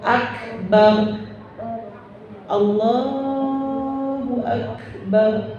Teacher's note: Rohnya tafkhim karena harkat sebenarnya ini kalau di harkatnya harkat fathah ya. Kalau berhenti jadi sukun, jadi akbar, rohnya tafkhim.